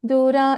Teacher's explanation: for Dura, you don't put any stress in those Alpaprana letters